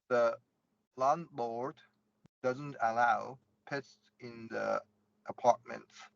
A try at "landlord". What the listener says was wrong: I would only go a little bit wider with landlord.